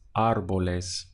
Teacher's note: So you wouldn't say árboles where you're stressing this part, or árboles where you're stressing the end, but árboles. The push comes at the front of the word where the accent is